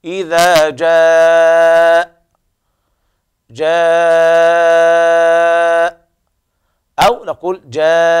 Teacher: ممكن نقف ب4 حركات أو 5 أو 6 مع السكون المحض، ليس فيه روم ولا إشمام